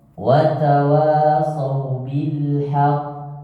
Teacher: وتواصوا بالحق Haqq. Karena di situ adalah qafnya sebenarnya itu adalah qalqalah akbar, bukan kubro lagi.